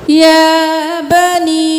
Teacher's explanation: کھڑی زبر ہے، ایک الف کے برابر کھینچیں ، یا بنی نہیں کرنا، یا بنی، مد ہے 5 انگلیوں